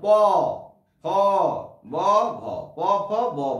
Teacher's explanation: যে ব্যঞ্জন ধ্বনি উচ্চারণ করতে গিয়ে দুটো ঠোঁট পরস্পরকে স্পর্শ করে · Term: ওষ্ঠ ব্যঞ্জন